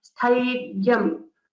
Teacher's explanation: focus on the mahaprana in tha and give the dhutam or stress at ya